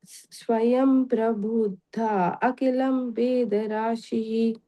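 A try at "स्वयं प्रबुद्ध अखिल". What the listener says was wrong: Yeah, that Prabuddha, Akila are two different words, but you have to say it together. So Swayam Prabuddha Akila.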